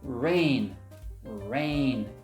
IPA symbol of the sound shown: ei